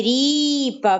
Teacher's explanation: в нас буде падати наголос на склад рі на голосний і